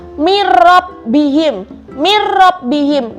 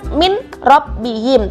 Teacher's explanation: Jadi hurufnya yang kalimatnya yang benar ya, kalimatnya yang tulisannya itu loh, itu kan min rob bihim, tapi kita dibacanya adalah langsung dimasukkan ke ro tanpa didengungkan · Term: idgham bila gunnah